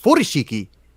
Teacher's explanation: I believe furoshiki would be pronounced furoshiki with the emphasis on the first syllable